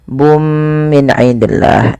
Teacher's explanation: Masukkan suara bunnya kepada mim dan diganti dan serta ditahan kitabum sambil ditahan dua harakat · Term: idgham bighunah, idgham bi gunnah